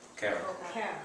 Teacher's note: It's a very soft R, kind of on top of the roof of your mouth.